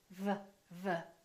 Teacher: To correctly produce the V sound, your lower lip should touch your upper teeth.